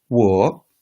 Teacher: five which is a falling rising tone